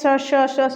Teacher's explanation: जब हम इनको बोलते हैं स श श श, सीटी जैसी ध्वनि निकलती है, इसलिए इसको ऊष्म, क्योंकि इसमें घर्षण ज़्यादा होता है, ऊष्मा की तरह। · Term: ऊष्म व्यंजन